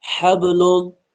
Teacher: ہا اس والے کو پتلا پڑھیں گے حلق کے بیچ والے حصے سے